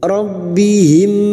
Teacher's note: yaitu huruf ba dan huruf mim Sain bertemu dengan huruf ini maka mim sukun dibaca jelas Idhar syafawi dibaca jelas tanpa mendengung